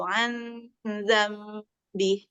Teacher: didengungkan tapi dia dengungnya ke arah huruf setelahnya